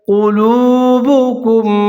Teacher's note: لام پیش والو وہ مدہ تھوڑا سا اس کو لمبا کر کے پڑھنا ہے۔ قلوبكم من کم جو جہاں پر اس کے اینڈ پہ میم ساکن ہے اور جو میم بعد اس کے شروع میں جو میم مشدد ہے دونوں کو ملا کر پڑھنا ہے آپ نے، اور یہاں پر بھی ادغام کرنا ہے ود غنّہ غنّے کے ساتھ۔